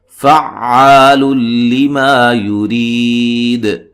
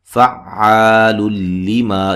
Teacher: فعال لما یرید، فا کو عین سے سختی سے ملانا ہے، زور سے ملانا ہے، ٹھیک ہے، اور یہ الف مدہ ہے، فعال لما، یہاں جو ہے تنوین کا ادغام ہو رہا ہے، نون تنوین کا ادغام ہے، بلا غنہ، غنہ نہیں کریں گے